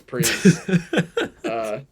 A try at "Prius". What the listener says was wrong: Why do you say Prius? What is with that pronunciation? I say Prius. You say Priz. Is it with a Z?